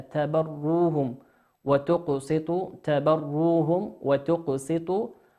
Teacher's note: ميم ساكنة في كلمة تبروهم أتى بعدها حرف الواو، والواو من حروف الإظهار